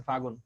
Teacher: অন্তর্হুতি বা ব্যঞ্জন লোপ হচ্ছে ব্যঞ্জন বর্ণ চলে যাবো, সিম্পলি ব্যঞ্জন বর্ণ হারায় যাবো, মনে করো ছিল আগে, লোপ পাইবো। যেমন ফাল্গুন হয়ে গেছে, লটা চলে গেছে, হারায় গেছে, হয়ে গেছে ফাগুন